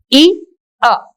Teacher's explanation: in the beginning it is one sound e and it moves on it glides to another sound that is ah so this is the main feature of diphthong starts with one